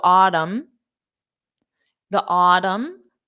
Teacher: So for autumn, there is no N sound.